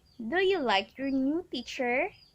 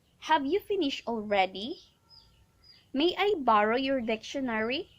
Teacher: intonation so first when we say rising intonation it talks about the pitch of voice rises at the end of the sentence